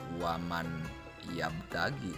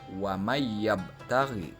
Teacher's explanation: Bukan waman yabtagi, tetapi huruf nun itu dimasukkan ke dalam huruf ya. Huruf nun dileburkan ke dalam huruf ya, sehingga cara membacanya wa mayyabtaghi. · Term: idgham bigunah